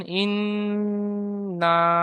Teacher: তাহলে গুন্না এক আলিফ হবে ফের এক আলিফ টানা হবে